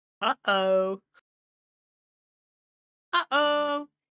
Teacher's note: Say uh-oh and you're almost certainly saying glottal stops